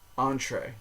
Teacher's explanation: The final vowel is drawn out into 2 separate vowel sounds in English. A long A sound and an E.